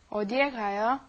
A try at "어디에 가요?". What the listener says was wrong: Okay, yeah, you don't want to put too much stress on 어디. Okay, the stress goes more on the 가요.